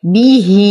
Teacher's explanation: لدينا صلة هاء الضمير وبعدها همز فهي صلة كبرى تمد بالإشباع 6 حركات